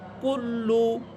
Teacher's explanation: যেহেতু উপরে পেশ আছে এই জন্য ঠোঁট গুল করে পড়বেন